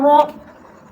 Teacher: را زبر را، را پر آپ کے پیچھے پڑا، را پر زبر ہو یا را پر پیش ہو تو آپ نے را کو پر کرنا ہے، یعنی آواز جو ہے را کی آواز آپ نے منہ میں، پورے منہ میں بھرنی ہے تو یہ پر ہو جائے گی